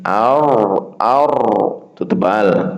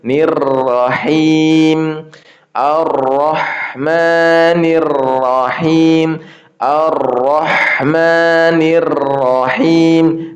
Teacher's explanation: Nir ketika masuknya itu tipis nirrahim